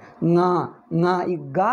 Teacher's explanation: ಗಾನು ಮೂಗಿನಿಂದ ಹೇಳಿದರೆ ಞ ಆಗಬೇಕು · ಐ ಎನ್ ಜಿ ಅಂದ್ರೆ ಹೇಳ್ತಿವಲ್ಲ ಅಂದ್ರೆ ಈ ಗಾ ಜಾಗದಿಂದ ಗ ಅಂದ್ರೆ ಗ ಕ್ಕೆ ಸ್ವಲ್ಪ ನೇಸಲ್ ಸೇರಿಸಬೇಕು ನೇಸಲ್ ಅಂದ್ರೆ ಅನುನಾಸಿಕ